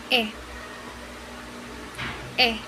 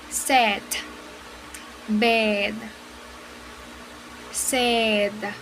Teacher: Here the position of the mouth is open. Also, this is a relaxed vowel sound and the tongue is still pushing forward. Here the tip of the tongue is touching the back of the bottom front teeth, as well as the lips still spread. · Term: short vowel sound